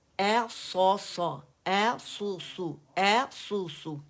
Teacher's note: صاد کو میں نے سین کر کے ادا نہیں کیا، بلکہ اے سو سو، اے سو سو، اے سو سو.